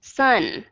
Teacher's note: Thì khi mà các bạn đọc âm N, chẳng hạn các bạn đọc sun, thì khi mà các bạn đưa cái đầu lưỡi lên đọc cái thì các bạn sẽ thấy tự động cái hơi nó ra cái mũi của mình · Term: Nasal sound